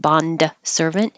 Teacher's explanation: the D you'll hold your tongue in the D position so you won't release it Bond servant so it you don't hear it at all so